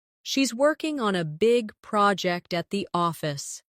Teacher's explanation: Stress: working, big, project, and office. This will help you speak with a natural English cadence instead of sounding too flat or robotic.